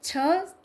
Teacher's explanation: छ ध्वनि का उच्चारण स्थान है तालव्य